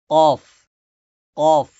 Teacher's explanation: জিহ্বার গোড়া থেকে উচ্চারণ করেন কফ কফ কফ একটু মোটা